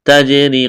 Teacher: تجری، قلقلہ کریں گے جیم پر، را کو باریک کرنا ہے، یا ساکن سے پہلے زیر ہے، یا مدہ ہے، ایک الف کے برابر کھینچنا ہے۔